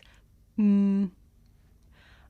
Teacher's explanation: [Music] thank you this is a consonant sound it's pronounced um I make this sound by closing my lips and letting the sound come through my nose